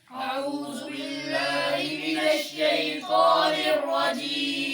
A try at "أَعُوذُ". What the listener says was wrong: بھئی آپ اعوذ سیٹی کیوں نکال رہے ہو؟ ٹھیک ہے سیٹی نہ نکال.